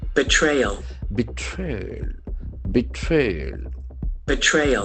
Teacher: Betrayal. The accent falls on the second syllable.